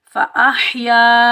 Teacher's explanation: یہ ہا حلق سے ادا ہوگا اور بغیر کھینچے پڑھیں گے